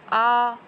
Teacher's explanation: विवृत स्वर यानी कि जिसमें मुंह जो है हमारा वो ज़्यादा खुलता है